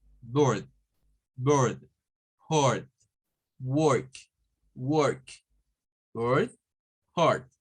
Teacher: Es un sonido que es casi como decir una U con una R